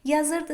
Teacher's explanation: Yazırdı sözündə ır şəkilçisindədir vurğu.